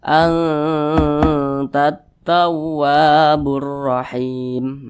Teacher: Jadi dia bunyi samarnya itu lebih dominan daripada bunyi dengungnya. Jadi dia lebih condong berbunyi n, tapi disamarkan. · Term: ikhfa hakiki aqrab